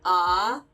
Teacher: her vowels tend to get a little bit spread. So instead of 'ah,' it's like 'awh.' So it's brighter sounding